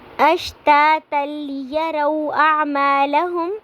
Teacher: لیروا پہ واو ساکن سے پہلے زبر آ رہی ہے تو یہاں پہ واو لین کریں گے، یعنی کہ ہم نے نرمی سے واو کو ادا کرنا ہے۔